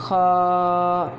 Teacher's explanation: اور پور پڑھنے میں عموماً غلطی یہ ہوتی ہے کہ ہونٹ گول ہوتے ہیں، حالانکہ ہم نے ہونٹوں کو گول نہیں کرنا، خا، ٹھیک ہے، ہونٹوں کو گول نہیں کرنا اور اس کو پر بھی پڑھنا ہے، اور یہ حلق کے ابتدائی حصہ سے ادا ہوگا